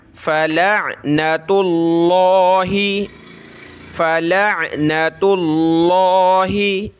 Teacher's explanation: ता पे पेश है तो हमने लफ्ज़ अल्लाह को मोटा करना है और ये ता आगे प्लस हो रही लफ्ज़ अल्लाह से, ठीक है, उसके लाम से।